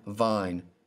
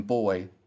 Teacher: there's more air that passes through your mouth with the v there's a hard stop with b